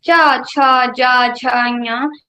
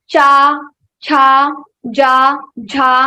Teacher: your tongue touches your talu. Talu is the roof of your mouth, the plain part above side of your mouth. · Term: cha varga